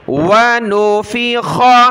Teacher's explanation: یہ خا کلرفل ہے، گلے سے نکالیں گے، موٹا پڑھنا ہے